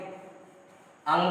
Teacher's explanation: कंठ के साथ नाक से भी आपकी प्राणवायु बाहर निकलेगी। अंगा जब बोलेंगे तो आपके प्राणवायु तो कंठ से सीधा डायरेक्ट बाहर निकलेगी मुंह होते हुए, और नाक से भी आपकी प्राणवायु निकलेगी। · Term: पंचमाक्षर